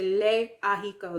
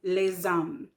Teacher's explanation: There's no liaison between les haricots versus there is a liaison with les hommes.